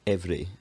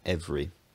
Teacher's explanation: I've also added some alveolar taps again for the r sound.